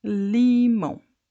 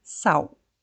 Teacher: também a ponta da língua atrás dos dentes superiores limão já no final de uma palavra ou de uma sílaba nós fazemos o l com o som de u